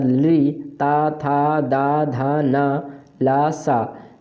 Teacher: ली, ता, था, दा, धा, ना, ला, सा इन वर्णों का उच्चारण स्थान दंत होता है